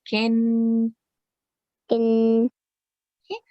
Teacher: because kaf is carrying kasratain under it, and you know that kasratain will produce nasal sound